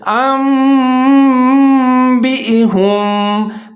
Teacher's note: نون کی آواز کو میم کے ساتھ تبدیل کریں گے، ساتھ میں غنہ کریں گے، یعنی کہ آواز کو ناک میں لے جائیں گے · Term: اقلاب